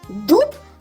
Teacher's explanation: слово дуб починається зі звука д він твердий приголосний